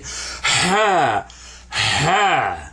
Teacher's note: Ha is the one that has the heavy H sound that you make when you're blowing on something